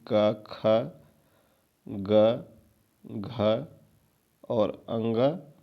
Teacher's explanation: जितने क वर्ग है यानी कि क ख ग घ और अंग और इसके अलावा आपका विसर्ग और ह विसर्ग और ह और अह यह सभी कंठ से बोले जाते हैं